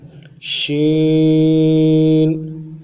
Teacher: تین الف کی مقدار میں کھینچنا ہے، آخر میں غنہ کرنا ہے